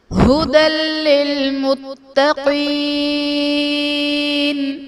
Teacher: ھدی للمتقین، ھدی میں دال پر 2 زبر کی تنوین، تنوین کے بعد حروف یرملون میں سے لام ہے تو یہاں پر ادغام بلا غنہ کا قاعدہ ہوگا، یعنی تنوین میں ہم غنہ نہیں کریں گے